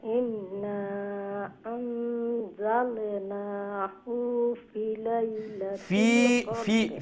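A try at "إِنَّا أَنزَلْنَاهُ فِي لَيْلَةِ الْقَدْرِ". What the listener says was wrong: ফি লম্বা হইব, ফা ইয়াজের ফি, ফি লাইলাতিল কদর।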